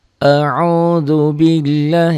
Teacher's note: ini lafaz Allahnya dibaca tipis.